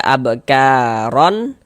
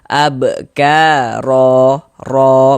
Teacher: Panjangnya 2 harokat, mad iwad.